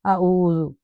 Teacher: اکثر اوقات کیسے پڑھا جاتا ہے اعوذ، فرنٹ ماؤتھ سے دونوں حروف ادا کیے جاتے ہیں۔ دیکھیں حمزہ اور عین یہ دو ڈیفرنٹ حروف ہیں، تو ڈیفرنٹ مخارج سے نکالے جاتے ہیں، ڈیفرنٹ پارٹ سے نکل رہے ہیں، تو ہمیں پھر کیا ہے غور و طلب کرنی ہے، تجوید کے ساتھ پڑھنا ہے قرآن پاک۔